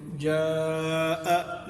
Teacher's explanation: جیسے جاء، تو جاء میں یہ الف تھا، یہ الف مدہ ہے زبر الف سے پہلے، اور یہ حمزہ آ گئی، تو اسی مد کو ہم نے جاء لمبا کر دیا۔ ایک سبب تو ہے یہ حمزہ، کہ حروف مدہ کے بعد اگر حمزہ آ جائے تو اس حرف مدہ کو لمبا کر دیں گے۔